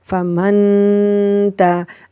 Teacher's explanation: اب نون ساکن کے بعد تا ہے، اور تا جو ہے وہ حروف اخفا میں سے ہے، اس لیے ہم یہاں پر غنہ کریں گے، غنہ ایک الف کے برابر ہوگا